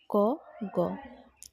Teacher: প্রতিটি বর্গের প্রথম ও তৃতীয় বর্ণগুলি উচ্চারণের সময় হ জাতীয় নিঃশ্বাস বায়ু বেরিয়ে আসে না, তাই এদের অল্পপ্রাণ বর্ণ বলে। যেমন ক, গ। এই বর্ণগুলো উচ্চারণের সময় ক যখন বলি আমরা তখন শেষে হটা আসে না।